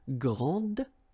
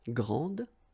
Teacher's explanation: don't insist on the final E, but then pronounce this D